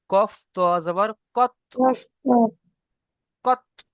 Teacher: ত হচ্ছে হুরুফে কলকলা, তাই একটু একটু কলকলা করেন